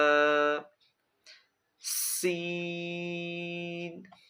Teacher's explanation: جب ہم سین کو ادا کریں گے تو سیٹی کی طرح تیز آواز نکلے گی